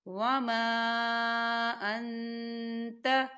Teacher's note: خالی الف سے پہلے زبر ہے، الف مدہ بھی ہو رہا ہے اور اس پہ مد بھی ہے، تو ہم اسے چار حرکت کے برابر کھینچیں گے۔